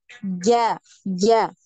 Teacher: Tengah lidah itu nempel di langit-langit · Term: huruf Jim